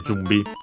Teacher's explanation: This one Jumbi. The N technically becomes M because of the following B. B is a bilabial consonant, so it becomes the nasal becomes the bilabial nasal, which is M.